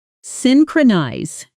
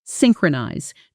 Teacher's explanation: 3 clean beats. Stress on that first syllable.